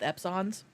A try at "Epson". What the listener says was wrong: Epson? You mean Epson? I've never heard anybody put stress on that second syllable before. Epson. like Exxon, but but with ink.